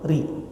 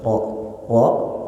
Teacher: ro itu tipis ketika dia suku kasroh. Ri. Rahang kita lebih rapat ke bawah. Ri. Kalau tebal, rahangnya mengangkat ke atas.